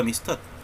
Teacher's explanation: lleva la mayor fuerza de voz en la última sílaba